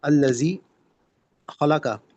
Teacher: الذی خلق، خلق قاف جو ہے حروف مستعلیہ میں سے ہے تو اس کو ہم پر کر کے پڑھیں گے، اور خا بھی جو ہے وہ حروف مستعلیہ ہے، اس سے بھی ہم پر کر کے پڑھیں گے